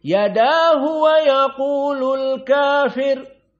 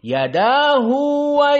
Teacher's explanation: di saat disambung yadahu ada dua harakat